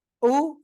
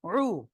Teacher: এটা সিম্পল উ, শক্ত, আর এটা রু, অর্থাৎ গলা চেপে উচ্চারণ হবে।